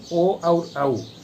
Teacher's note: ओ और औ दोनों कंठ और ओष्ठ के अपेक्षित सहयोग से उच्चरित होने के कारण इनको कंठोष्ठ कहते हैं